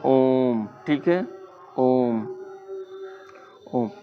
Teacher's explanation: इसमें उच्चारण की तीन मात्रा का समय लगता है। ध्यान रखिए जैसे हम बोलते हैं ओम। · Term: प्लुत स्वर